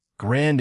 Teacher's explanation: Grand ends in a nasal vowel, not a d.